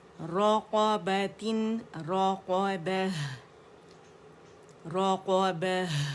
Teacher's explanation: ہے کو زیادہ واضح کریں گے کہ اس میں ہمس بھی ہے اور اس میں کیا ہے ہمارے پاس رخاوہ بھی ہے